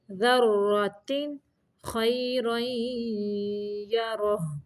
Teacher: ذرۃ پہ اظہار کا قاعدہ ہے، صرف ظاہر کرنا ہے تنوین کو